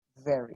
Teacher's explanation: la V, tanto en inglés como en español, es labio dental, es dentada. Tienes que montarle los dientes a los labios antes de pronunciar esta V.